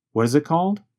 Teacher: What is becomes reduced to what is. The letter T in what changes to a sound closer to the letter D. And the word it goes by so fast that it becomes very reduced to just a vowel sound plus a very fast held T.